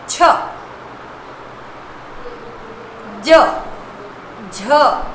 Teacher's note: ये च वर्ग के जो है वो एक ही स्थान यानी आपके मुख के तालू से निकलते हैं।